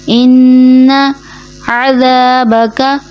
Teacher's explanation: ان نون کو کھینچنا نہیں، عموماً یہاں نون کو کھینچ دیا جاتا ہے، جیسے ان جو درست ادائیگی نہیں ہے، درست ادائیگی ہے ان عذابک.